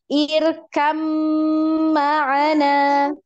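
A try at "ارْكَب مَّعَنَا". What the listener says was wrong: hati-hati jangan terlalu panjang juga ya, terlalu lama.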